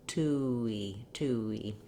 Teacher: from the round oo to the unrounded e